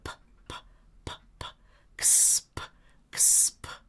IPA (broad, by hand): p